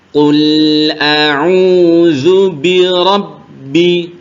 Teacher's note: Rabbi ditekan ditekan ditekan membacanya karena ada tasydidnya